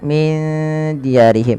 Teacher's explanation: ikhfa lagi, samarkan nunnya kepada dal